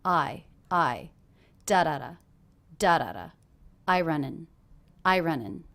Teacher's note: I is a little bit more stressed than running